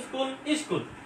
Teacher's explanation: সামনে কি একটা অতিরিক্ত স্বরধ্বনি আসছে না? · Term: আদি স্বরাগম